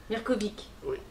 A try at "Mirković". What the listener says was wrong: Oui, mais on dit Vitch. vous prononcez à la française.